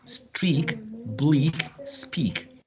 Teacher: We have streak, bleak, speak. All of them are pronounced with the long tense E.